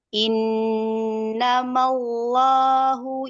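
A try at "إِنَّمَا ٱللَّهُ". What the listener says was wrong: Ya, langsung kelam. Bukan mauloh, malloh. Lah pokoknya intinya langsung ke makhraj huruf lam ya, jangan ada gerakan bibir. Kalau ada gerakan bibir itu nanti ya, waw yang keluar.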